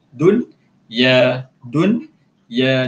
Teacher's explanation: Tapi pada kalimah dunia ni nun dengan ya berada pada kalimah yang sama. Dia tak boleh jadikan, tak boleh jadi idgham, jadi izhar, kena jelas. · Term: izhar mutlak